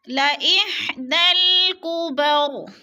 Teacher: دال کو ہم نے لام کے ساتھ ملا کر پڑھنا ہے، اس لیے کہ یا اور الف کے اوپر کوئی حرکت نہیں ہے، زبر زیر پیش، تو لہٰذا ہم نے دال کو لام کے ساتھ جوڑ کر پڑھنا ہے۔